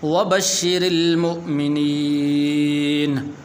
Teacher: را کے نیچے زیر ہے تو اس لیے اس را کو پر نہیں کرنا بلکہ باریک کر کے پڑھنا ہے۔ اسی طرح یہ لفظ ہے مؤمنین، حمزہ ہے یہاں پر، مومنین ایسے نہیں پڑھنا، ایسے اگر آپ پڑھیں گے تو پھر یہ حمزہ نہیں پڑھا جائے گا۔